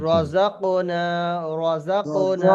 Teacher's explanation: জবর রয়ের জবর উপরে আছে। জবর আছে, সেই জন্য র এটা পুর পড়িতে হবে, অর্থাৎ মুখটা একটু গোল করে পড়িতে হবে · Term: র পুর